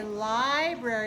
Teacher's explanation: we say library with the stress on the first syllable